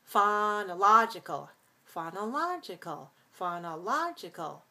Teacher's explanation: when we get to the adjective we have to change because the stress shifts from syllable two to syllable three · that's five syllables we stress the third syllable